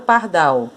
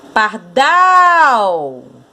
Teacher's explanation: Então a sílaba mais forte é o dal